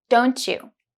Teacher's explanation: T in don't is linked to Y in you.